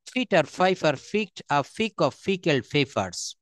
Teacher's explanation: আমি আবারও বলি, সব জায়গায় ফ উচ্চারণ করব, পিটার বলবো না, এটা বলবো ফিটার।